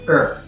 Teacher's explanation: The H is dropped.